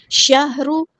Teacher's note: شہر، ہاں سمپل ادا کرنا ہے، شہر، ہاں ساکن کو ہلانا نہیں ہے، را ہمارا ہیوی لیٹر ہے، موٹا ادا کریں گے۔